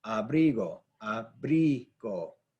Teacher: Hopefully you could hear the inflection is right there on that bri.